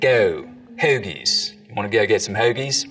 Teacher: the goat diphthong starts to move forwards in the mouth.